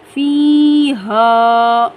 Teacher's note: یا ساکن سے پہلے زیر ہے یعنی یا مدہ، اس کو 1 الف کی مقدار کھینچیں گے